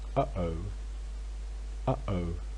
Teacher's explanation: anyone who's watched the Teletubbies will be well-acquainted with uh-oh uh-oh which involves two glottal stops